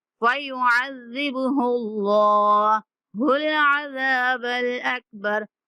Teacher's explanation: اللہ کے لام کو موٹا کر کے پڑھیں گے